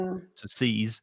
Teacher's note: So seize with the Z, there is vibration.